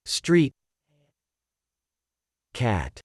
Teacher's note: the street, we stop the airflow with the t sound at the beginning